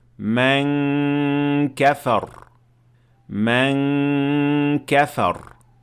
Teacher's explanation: your mouth is prepared to say Kah without actually saying it, and then you perform ghunna of 2 harakat